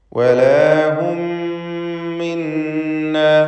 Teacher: ഇദ്ഗാം ഷഫവി, 2 മീമുകളെ ഒറ്റ മീമാക്കി ഷദ്ദുള്ള മീമാക്കി മണിച്ചുച്ചരിക്കുക.